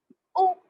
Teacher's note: او، یو کی آواز آئے گی. او آواز آگے کو جاتی ہے. آواز اور منہ دونوں بھی مطلب ایک دم سے گول ہوتا ہے. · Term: پیش